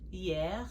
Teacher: that H is silent